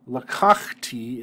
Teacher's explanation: lakakhti is not accented on the final syllable it's accented on the second to final syllable